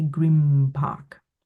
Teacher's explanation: grim park because it's easier to say the m rather than the n